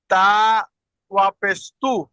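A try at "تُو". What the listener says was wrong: এটা ওয়াও মাদ্দা, টান দিয়ে পড়তে হবে। তা ওয়াও পেশ তু।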